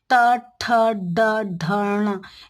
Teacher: जब जीभ आप उल्टा जीभ को घुमा के, अंदर की तरफ घुमा के ऊपर वाले जबड़े पे जब स्पर्श करते हैं, तब ये ट वर्ग का जो व्यंजन है वो आप बोल पाएंगे।